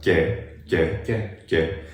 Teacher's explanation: It resembles a Y sound because the tongue is just a little bit more forward, basically, is what's happening. Right, the contact point of articulation is more forward in the palate, and that's also where the Y sound is created in the word yes, which makes it sound like there's a Y sound in it.